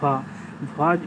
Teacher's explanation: ओष्ठ महाप्राण घोष व्यंजन जो है वो है भ।